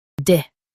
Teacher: Stress core and keep D soft.